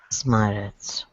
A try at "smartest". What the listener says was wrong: Smartest. So it's almost like a T too. So we don't say smartest, right? It's not a hard T. smartest. So smartest. Smartest, because we smartest. It's almost like a soft T there. It's because it comes after this consonant. You have an R here, so smartest, right?